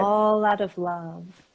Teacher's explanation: you have all out of love, but we're going to do a flap T in there.